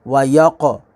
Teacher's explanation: قاف کو پر پڑھیں گے، حروف مستعلیہ ہے